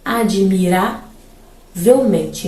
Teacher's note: Então, ra é uma sílaba subtônica, mente uma sílaba tônica.